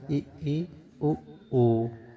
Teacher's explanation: इन स्वरों के उच्चारण में मुख सबसे कम खुलता है। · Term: संवृत स्वर